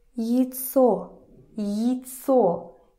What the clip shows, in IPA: ihtso